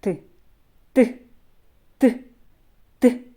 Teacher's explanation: при проголошенні звука Т повітря не виходить вільно зустрічає перешкоду Ця перешкода зуби та язик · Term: звук т